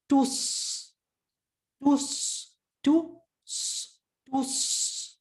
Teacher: It's just the s, normal with your tongue making like a spoon or bowl shape. But think of it like a spoon because it's the front part of your tongue, not your entire tongue. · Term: Saad with a sukun